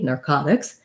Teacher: this T we say as a flap sound in because it's between two vowels and it's not stressed. So it sounds more like a light D, narcotics.